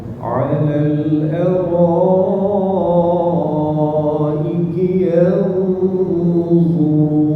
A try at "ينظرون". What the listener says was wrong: Ni tebal yanzur. Bunyi penuh mulut ni. Tak ada penuh mulut ni. Yanzur.